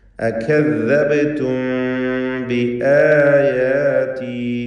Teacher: അകദ്ദബ്തും ബിആയാതി, ശേഷം ബാ വന്നതുകൊണ്ട് സാക്കിനത്ത് അമീമിനെ ഇഖ്ഫ ഷഫവി നൽകി മണിച്ചുകൊണ്ട് ഉച്ചരിക്കണം